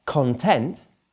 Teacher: content, where the stress is on the second syllable, means you're happy.